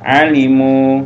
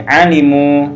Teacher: Jadi harus dipanjangi mu-nya. Kenapa? Karena ada waw sukun. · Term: mat